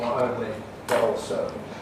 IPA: nɒʔ əʊnli bəʔ ɔːlsəʊ